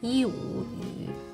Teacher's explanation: Initial is 一, final is 五, and the tone is falling rising tone.